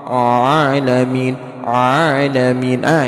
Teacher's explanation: banyak orang mengucapkan huruf ain suaranya bindeng kayak orang suara pilek · Pengucapan huruf ain terdengar sengau ke hidung, ya. Ini adalah karena huruf ain tidak dibaca dengan benar.